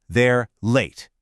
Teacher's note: The verb they're is weak. The important information, late, is strong.